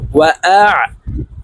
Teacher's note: আইন হরফকে হলকের মধ্যখান থেকে চাপ দিয়ে উচ্চারণ করব।